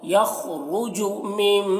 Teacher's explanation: खौ को पुर पढ़ते हैं, रौ को भी पुर